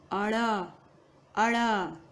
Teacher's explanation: इसमें नासिका का प्रयोग बिल्कुल नहीं होगा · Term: उत्क्षिप्त व्यंजन